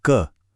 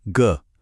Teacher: कोई कंपन नहीं हुआ है ना? ये है अघोष। अब बोलिए ग। महसूस हुआ कंपन? ये है सघोष।